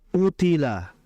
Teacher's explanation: Utila qof-nya memang huruf tebal tapi ketebalannya masih di bawah ketika kondisi qofnya itu berharakat fathah.